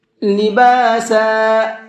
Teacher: با کو بھی کھینچیں گے اور سین کو بھی کھینچیں گے